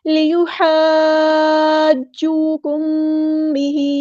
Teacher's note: میم ساکن کے بعد با آیا ہے تو ہم نے یہاں پر اخفاء شفوی کرنا ہے · مد لازم ہے تو لازمی مد کرنی ہے 6 حرکات کے برابر. ہم نے اس کو لمبا کرنا ہے.